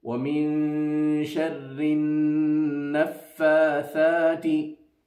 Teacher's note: tha will be pronounced by the tip of the tongue touching the edges of the two top front teeth